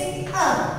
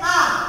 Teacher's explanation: जैसे अ फटाफट से आ रहा है, फिर है आ, यानी कि अ से थोड़ा ज्यादा समय लगा